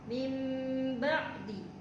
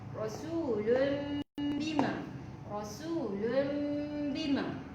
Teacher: Jadi kena dengung. Dengung, tutup mulut tetapi tidak tekan. Maksudnya kita tutup rapatkan je mulut tapi tidak perlu tekan. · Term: iklab